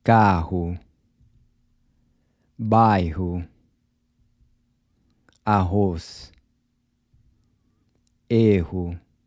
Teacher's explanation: So just like the R at the beginning of words, the double R is also pronounced like an H.